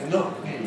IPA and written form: ˈnɒt̚ ˈmiː (Not me)